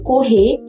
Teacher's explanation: como se o R sumisse e toda essa força do R passasse pra última vogal · Aqui nós contamos com uma característica bastante específica que se trata do apagamento do R no final da sílaba. Em termos técnicos, o apagamento do rótico em coda final, que é diferente do que acontece por aí.